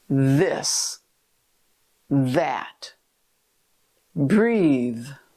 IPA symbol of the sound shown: ð